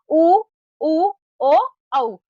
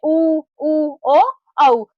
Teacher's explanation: जैसे उ, उ, ओ, औ। इन स्वरों के उच्चारण के समय होठ आगे की ओर गोल हो जाते हैं। जब आप इनका उच्चारण करते हो तो आपके होठ है वह है आगे की तरफ निकल आते हैं। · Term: वृत्ताकार स्वर